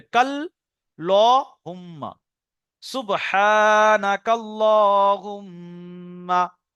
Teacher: আচ্ছা, এবারে যখন আল্লাহুম্মাটা এর সঙ্গে মেলাবো, শুধু ছেড়ে দিলে তো সুবহানাক আল্লাহুম্মা, কিন্তু যখন মিলিয়ে পড়বো সুবহানাকাল্লাহুম্মা, এই কাফের সঙ্গে আল্লাহর লামের তাসদিদে মিলবে